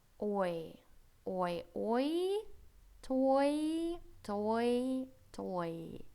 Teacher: после гласной после O у нас Y идёт и приобретает вот такой дифтонг звучание